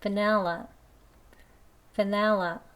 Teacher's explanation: 그리고요, 두 번째 발음은요, 여기 보시면 가운데 E라는 소리 대신에 E 소문자 에 소리가 들어있어요. 턱을 아래로 떨구면서 살짝만 벌려서 에라고 소리네요.